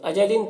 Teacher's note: تنوین کے بعد ہا ہے حروف حلقی میں سے تو اظہار حقیقی ہوگا، جلد پڑھنا ہے